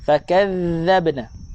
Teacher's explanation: Huruf dzal makhraj keluar lidah lebih daripada gigi.